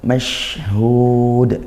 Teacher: kita sempurnakan mashhud, dialirkan suaranya ya, dan desis